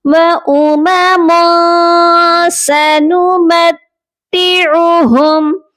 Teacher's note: تو یہاں پر ہم نے تنوین پر اخفا کرنا ہے، پراپر غنہ نہیں کرنا، سافٹ غنہ کرنا ہے، آواز کو ناک میں چھپا کر پڑھنا ہے.